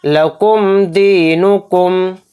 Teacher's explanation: اس میم کو ظاہر کر کے بلا غنہ کے ہم اس کو پڑھیں گے۔ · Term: اظہار شفوی